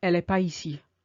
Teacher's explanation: Not only do we remove the N, but we don't link the pas with the ici.